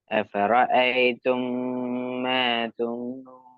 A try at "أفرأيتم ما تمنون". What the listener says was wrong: அதான் அஃபர்ன்னு வரக்கூடாது. அஃபராஐதும் மா தும்னூன். ரேண்டு வந்தா அது மெல்லினமே. ரேண்டு ரேன்னு எழுத்தோண்டி அரபுல இல்ல முதலாவது. அது ராண்டு வரணும். அஃபராஐதும் அஃபராஐதும் மா தும்னூன்.